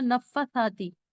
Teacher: مطلب فا کا کھڑا زبر پڑھا ہی نہیں، اور ساری زندگی سب ایسے ہی پڑھ رہے ہیں نفساتی